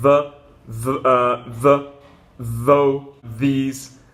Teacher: The second sound is kind of a buzzing, vibrating sound in words like the, though, these. And what you do here is you touch your tongue on the top, not really on the bottom there, and you kind of, there's like a vibration.